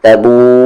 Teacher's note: مد ہے، کھینچیں گے اسے 3 سے 4 حرکت کے ایکول